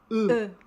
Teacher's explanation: É como se você deixasse os lábios na posição de falar I, mas aí você tenta falar U. Então, deixa na posição de I, mas fala U.